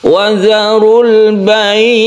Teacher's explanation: mat layin ini jatuh ketika waqaf, jadi ini disukun ainnya sehingga ini bisa mencapai 3 alif, itu boleh.